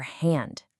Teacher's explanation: It makes a really soft, breathy sound. Almost like a whisper.